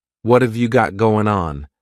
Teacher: what and have are going to be pushed together